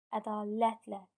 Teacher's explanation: Sözdə vurğu 3-cü hecanın üzərindədir. Ədalətlə, bəli, vurğu 3-cü hecadadır.